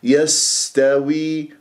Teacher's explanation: السين صفير، السين جريان للنفس مهموس، جريان للصوت رخاوة. يستوي هكذا بهذه الطريقة، اكسر الواو. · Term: السين الساكنة